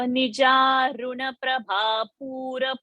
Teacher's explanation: Only thing that ru should not be dirgha. It is a short.